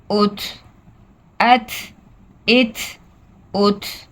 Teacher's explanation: تا میں ایک ایئر فلو ہوگی، ہوا ہوگی جو آپ کو محسوس ہوگی. آپ اپنا ہاتھ اپنے منہ کے سامنے رکھیں گے تو آپ کو پتہ چلے گا کہ ایک ہوا سی محسوس ہو رہی ہے جب ہم تا ساکن کو ادا کر رہے ہیں.